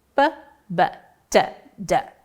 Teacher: elementos que se distinguem ou pela não vibração ou pela vibração das cordas vocais. O primeiro elemento de cada par é sempre o não vozeado e o segundo é o vozeado.